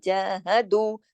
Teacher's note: दाल वाव पेश दू, पूरा अदा होगा, क्योंकि ये वाव जो है मद का काम कर रही है यहाँ पर। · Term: वाव मद्दा